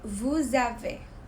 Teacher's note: The S, we're going to pronounce it like a Z letter.